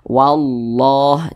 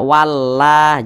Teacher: maka lafaz Allah dibaca tebal dibaca tafkhim Ini lafaz Allah sebelumnya nih ada huruf yang memiliki